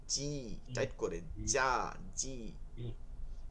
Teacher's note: জিম যেটা আছে এটা একদম মধ্যখানটা তালুতে লাগে, এর জন্য এটা শক্ত হয়